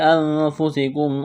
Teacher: نون ساکن کے بعد فا ہے، حروف اخفا ہے، غنہ کریں گے، آواز ناک میں چھپائیں گے ، سین میں سیٹی کی آواز پیدا کریں گے، سین کو